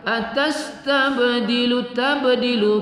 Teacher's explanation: Q qo kita baca satu Alif dua harakat atas tabdilu tabdilu kita baca Qalqalah Qalqalah Sugra pada ba berbaris sukun